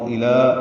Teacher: لام کو 2 حرکات لمبا کریں گے